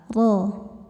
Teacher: Ra dibaca secara tafkhim karena berharakat fathah. Cara bacanya dibaca tebal